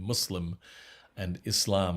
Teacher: pronunciation muslim and islam with a slightly uh hissing ass and emphasis on the second syllable